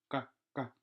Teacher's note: here the back of the tongue is touching the top of the mouth.